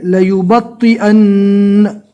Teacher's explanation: نون کے اوپر تشدید ہے، یہاں پر نون کو ڈبل پڑھنا پڑے گا، لیکن جو دوسرے نمبر کا نون پڑھیں گے اس کے اوپر جزم پڑھنا ہے۔